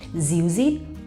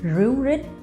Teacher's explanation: in the north of Vietnam, we pronounce R as Z